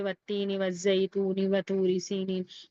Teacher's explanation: قمری میں واو کو عین سے ملائیں گے، واو کو لام سے ملائیں گے، ہم یہاں پر الف کو سائلنٹ کریں گے، مطلب الف کو نہیں پڑھیں گے، یہاں پر الف اور لام دونوں کو پڑھنا ہے۔ شمسی میں الف اور لام دونوں نہیں پڑھا جائے گا، اور قمری میں صرف الف نہیں پڑھا جائے گا، لام پڑھا جائے گا، لام کو ظاہر کر کے پڑھنا ہے۔